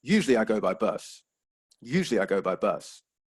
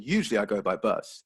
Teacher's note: so you're showing that it's extra information it has a slightly falling intonation to indicate that to the listener